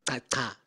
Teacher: You have two dental clicks, and the second one is clearly aspirated. And I think the first one is also, when you look at the oral airflow data, there's little doubt that there is a nice aspiration here.